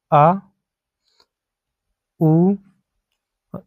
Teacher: आ उ आ और उ से मिलकर बना होते हैं। तो आ का उच्चारण कंठ से होता है, उ का उच्चारण ओष्ठ से होता है, तो उनको मिला के होता है कंठ ओष्ठ।